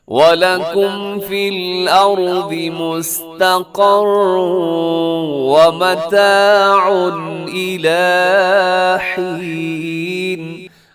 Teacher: تنوین کے بعد حمزہ آ رہا ہے جو کہ حروف حلقی میں سے ہے، تو یہاں پر آپ نے اظہار حلقی کرنا ہے